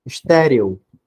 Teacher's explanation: o é tem um som de i então ele vai ser uma semivogal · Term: ditongo crescente